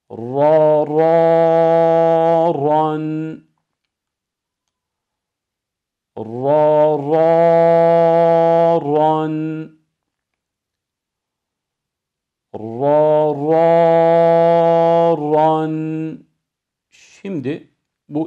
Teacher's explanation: Fetha konumunda ra da kalın okunan harflerimizdendir.